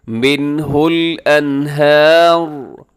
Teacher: نون ساکن کے بعد ہاں ہے فوراً جو آتا ہے، تو یہاں پر ہم اظہار کر کے پڑھیں گے، یعنی غنہ نہیں کریں گے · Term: اظہار حلقی